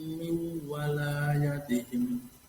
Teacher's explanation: Bacaan idgham guna, ada nun mati bertemu dengan waw dan harus dibaca dengung.